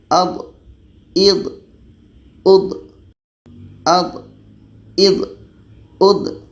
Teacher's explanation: Huruf D ini letaknya pada salah satu tepi lidah atau keduanya bertemu dengan gigi geraham atas. Jadi hati-hati ketika sebut d ini jangan sampai ada hamasnya atau ada anginnya.